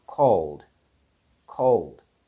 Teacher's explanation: So there is no sound between the L and the D. Yes, we immediately go into the D sound.